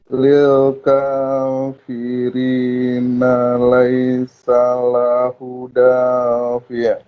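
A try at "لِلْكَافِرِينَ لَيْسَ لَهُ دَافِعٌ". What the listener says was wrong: Hu-nya dipanjangin sedikit. Lahu gitu.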